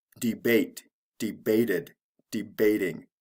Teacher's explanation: there's no stress change but there is an extra syllable with the extra ending